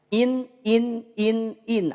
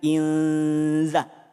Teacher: maka in tidak lagi dibaca in tapi berubah menjadi samar